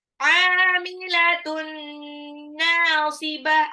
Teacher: Amilatun tanwin ketemu nun itu idgham bi gunnah, jadi dilebur tapi ditahan 2 sampai 3 harokat ya biar terdengar gunnahnya itu di mana. Amilatun nunnya 2 harokat, mad tabi'i, ya.